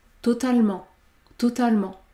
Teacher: le E du mot totalement n'est jamais prononcé, puisqu'il y a une consonne prononcée devant.